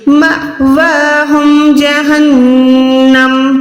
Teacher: اب یہ واو پہ زبر نہیں بلکہ کھڑی زبر ہے، کھڑی زبر ہے تو آپ نے 1 سیکنڈ واو کو بھی لمبا کرنا ہے